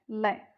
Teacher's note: जिस ध्वनि के उच्चारण में श्वास जिह्वा के दोनों पार्श्व से निकलती है वह पार्श्विक ध्वनि कहलाती है। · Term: पार्श्विक व्यंजन